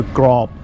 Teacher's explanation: length of the vowel isn't important we know that with a a mid-class initial consonant and a dead syllable we're going to get a low tone